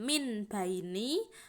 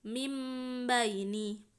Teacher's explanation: Contohnya mim baini, jangan min baini atau min baini, itu tidak boleh ya. Nun sukun yang harusnya n, min n-nya itu diganti menjadi m. Nah dibalik ya, dibalik menjadi mim sukun ya, menjadi mim baini. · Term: iklab